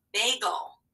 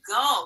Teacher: the second syllable is gull. We don't even hear that vowel at all. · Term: schwa sound